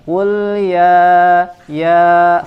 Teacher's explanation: madnya dibaca lebih dari 2 harokat, ya, atau boleh 2 harokat, 4 maupun 5 harokat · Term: Mad jaiz munfasil